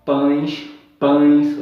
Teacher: o E está funcionando como uma semivogal